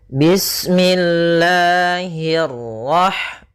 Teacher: Allah itu ada mad thabi'i pada lafal lanya. Nah, di sini kita panjangkan dua harakat.